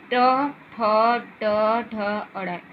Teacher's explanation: मूर्धा में आप ट ठ ड ढ अड़, आपके जो जीभ है वो आपको मूर्धा जैसे जीभ को फोल्ड हो जाती है अंदर से, और उसे आप देखिए जीभ मुड़ जाती है, ट ठ ड ढ अड़।